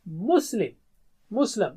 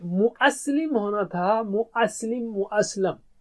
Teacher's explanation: حمزہ جو ہے نا کمزور حرف کی طرح یہاں ڈراپ ہو جاتا ہے